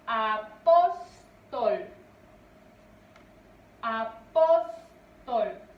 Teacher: su mayor fuerza de voz recae en pos